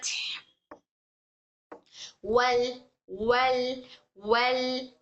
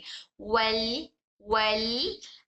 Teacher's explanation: लाम पढ़ते वक्त में जबान वहां हमारे ऊपर मसोड़ों को चिपकने की वजह से आवाज बाजू से निकल रही है, वल वल, हमारे मुंह के दोनों साइड से सब बाहर से आवाज निकल रही है, वल वल वल फतह, वल फतह, इस तरह से।